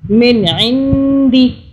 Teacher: نون ساکن پہ ہم اخفا کرتے ہیں